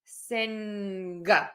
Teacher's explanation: There are regions in the country where native speakers will say sing, and then they add a really strong G at the end.